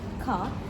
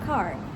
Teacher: Meanwhile, American pron as car. British has a long vowel with no R sounds.